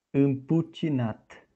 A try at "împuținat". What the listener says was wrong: Nope, it's not a ch. Yeah, so because C is followed by an E, we pronounce it ce, not che.